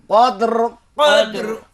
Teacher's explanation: জিব্বা র আর মাখরাজ হচ্ছে জিব্বার আগার পিঠ, তার বারবার উপরের তালুর সঙ্গে লাগাইয়া। যখন র সাকিন হয়ে যাবে তখন 1.5 গুণের মতো উচ্চারণ হবে, এর বেশি হবে না, যেহেতু র সাকিন।